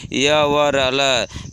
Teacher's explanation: फिर ईसत स्पृष्ट, इस प्रयत्न में जिह्वा का स्पर्श पूरी तरह मुख से नहीं होता, अर्थात जिस वर्ण का उच्चारण करते समय जिह्वा का स्पर्श पूर्ण रूप से नहीं होता वो ईसत स्पृष्ट वर्ण कहलाते हैं, जैसे य व र ल।